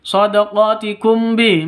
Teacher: mim mati bertemu dengan ba, dengung ya, samar didengungkan karena ikhfa safawi, hukum mim mati bertemu dengan ba, ikhfa safawi, samar dengung.